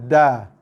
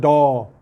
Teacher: Sebab dal bukan huruf meninggi. Dal bukan huruf isti'la. Sebab tu tengah dan juga pangkal lidah dia menurun. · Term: huruf dal